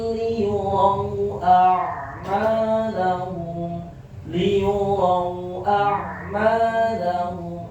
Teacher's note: praktik lin lunak lembut tidak boleh dipanjangin